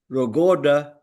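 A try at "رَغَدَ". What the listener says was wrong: Kasih getar lagi di ujung itu. Sentuh, sentuh gusi bagian atas ya.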